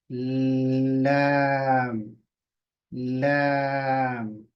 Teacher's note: आठ दातो के पीछे का जो हिस्सा है उसको जबान कवर करेगी